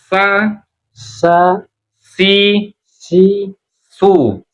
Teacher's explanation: Ujung lidah berhadapan dengan ujung gigi seri bagian bawah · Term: sin